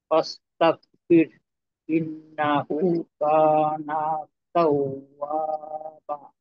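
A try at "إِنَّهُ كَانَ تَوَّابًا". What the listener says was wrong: হুম, বা, বা আরেকটু টানতে হবে আর কি।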